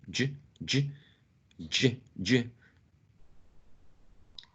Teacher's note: it's like in between the the alveolar Ridge and the hard palate it's like a post alveolar sound · so in terms of place it should be a post alveolar